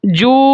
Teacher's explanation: مد کو مکمل کرنے کے بعد میں نے جب نون کے ساتھ ملایا تو میں نے غنہ بھی کیا ہے۔